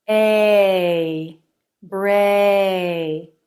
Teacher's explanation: the jaw drops more for the beginning of the sound and less for the end of the sound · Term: ay as in say diphthong